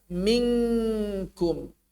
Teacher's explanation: Nun bertemu dengan kaf. Bercampur sekali dengan suara kaf.